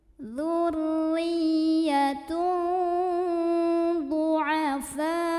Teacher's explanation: Maka dibaca panjang boleh 4, boleh 5 harokat. Enggak boleh 2 ya, karena mad wajib. · Karena ada tanwin dhammah yang ketemu sama huruf dhad, maka cara bacanya tanwin dhammah ini dibunyikan samar-samar menuju huruf dhad. Ya, sambil ada dengungannya juga. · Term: mad wajib muttasil, ikhfa awsat